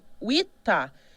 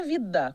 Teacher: E nas línguas ocidentais, você tem uma sonorização, ou seja, a consoante surda vira sonora